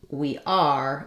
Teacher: unless I'm saying we are and I'm stressing on it then I'm going to have my full R sound